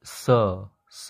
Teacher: हम लोग स बोल रहे हैं तो वाइब्रेशन नहीं हो रहा है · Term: वॉइसलेस प्लॉसिव्स